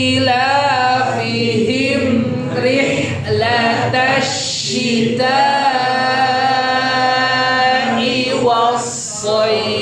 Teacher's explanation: Ilafihim rihla pakai ha tengah tenggorokan